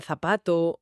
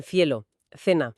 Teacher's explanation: Es interdental sorda, la punta de la lengua entre los dientes.